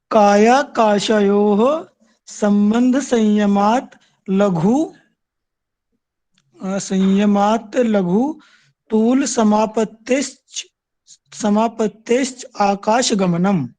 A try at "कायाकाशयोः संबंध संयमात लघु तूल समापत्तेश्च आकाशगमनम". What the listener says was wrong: Very good ji.